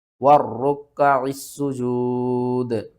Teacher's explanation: پھر اس عین کو ہم نے سین کے ساتھ ملانا ہے، سین کو ہم نے سیٹی کے ساتھ پڑھنا ہے، 2 بار پڑھنا ہے اور سختی کے ساتھ پڑھنا ہے